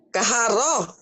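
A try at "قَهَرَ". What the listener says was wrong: Jangan kaharo ya, Bu, ya. Koharo. Jadi huruf O-nya ini, Bu, ya. Huruf O mengandung O-nya ko dan ro. Jadi kalau ini jangan kahara, koharo.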